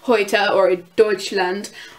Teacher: There's EU, which makes the OI sound for some reason